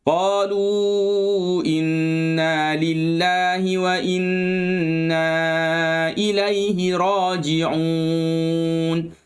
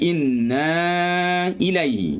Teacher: Waw ni dikira sebagai huruf mat. Bertemu dengan hamzah dalam dua kalimah. Maka dibaca sepanjang 4 harakat. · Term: mat jaiz munfasil